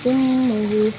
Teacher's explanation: Dalam kata ummuhu terdapat hukum bacaan gunah karena mim bertasdid dibaca dengung dan ditahan 2 harokat